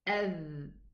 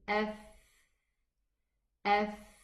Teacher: the difference between dhal and tha is that the tongue in the tha goes out a little bit more and it allows the air to run.